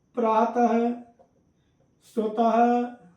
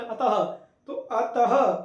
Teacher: last में जो दो बिंदी लगती हैं वो ऐसी लगती हैं कि जैसे हम व्यंजन का हा बोल रहे हों